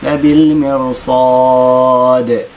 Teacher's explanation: لأن بعدها حرف الصاد حرف مستعلي، اللي كيكون أمام حرف الراء حرف مستعلي يعني هنا دائما نفخم حرف الراء، يعني ما تبقى شيء مكسورة.